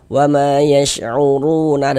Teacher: Ini kalau misalkan kita tidak berhenti di huruf nun, tidak berwakaf di huruf nun, kita wasolkan wa ma yash'uruna, dan langsung kita sambung, langsung kita teruskan, tidak berhenti di huruf nun, maka panjangnya ru tetaplah menjadi mad tabi'i dan dibaca dengan panjang 2 harokat